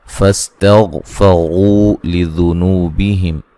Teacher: غین کو موٹا ادا کریں گے، غین کو ہلانا نہیں ہے